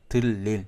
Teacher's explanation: 리을과 니은이 만났을 때 이 니은은 리을로 바뀐다. 이게 유음화의 법칙이었죠.